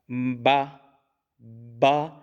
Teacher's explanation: با جو ہے یہ دونوں ہونٹوں کے تر حصے سے ادا ہوتا ہے. با دیکھیں دونوں ہونٹ جو ہے نا وہ تر حصے جو آپس میں ملیں گے اور باقاعدگی طور پر، کامل طور پر آپس میں ان کو ملانے کو ہم با، با.